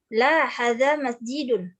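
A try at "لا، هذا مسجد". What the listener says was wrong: Hadza Hadzanya harus tetap panjang dua-duanya Om ya. La, hadza masjidun. Jadi haknya sebenarnya ada alif kecil. Harfu tanbih itu ada alifnya. Ha gitu. Bukan hadza, hadza gitu ya. La, hadza masjidun.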